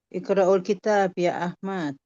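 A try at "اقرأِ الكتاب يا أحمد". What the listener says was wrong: Iqra menjadi iqra'il disambung.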